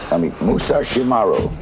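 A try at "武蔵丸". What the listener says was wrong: Musashimaru. The R is hard, huh?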